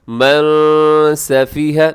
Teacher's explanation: اخفا کریں گے، آواز کو ناک میں لے کے جائیں گے